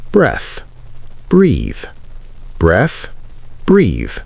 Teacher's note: Breathe, with the E at the end, is pronounced with a long E sound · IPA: /briːð/